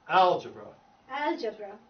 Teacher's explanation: The syllable, the emphasis is on al.